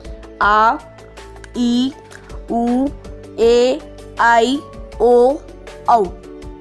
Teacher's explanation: अब दीर्घ स्वर। जिन स्वरों के उच्चारण में ह्रस्व स्वर की अपेक्षा दोगुना समय लगता है,